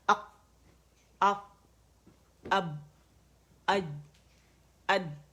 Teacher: کیونکہ air pressure اتنا زیادہ ہوتا ہے، آواز جب مخرج پہ جاتے ہیں تو آواز سخت و قوت کے ساتھ ٹھہر جاتی ہے، رک جاتی ہے، بند ہو جاتی ہے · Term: قلقلہ